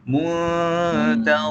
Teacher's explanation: Kita tak sebut nun tu secara jelas, kita tak sebut dia muntazirun, kita tak sebut dia muntazirun, tetapi kita memasukkan sedikit huruf nun mati itu ke dalam huruf selepas dia. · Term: ikhfa hakiki